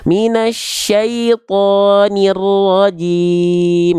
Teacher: Ro-nya ditekan, ro-nya bertasydid.